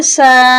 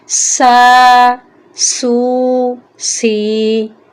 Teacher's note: سین بھی سیٹی والا حرف ہے اس لیے یہاں پر سیٹی کی ہلکی سی آواز آنی چاہیے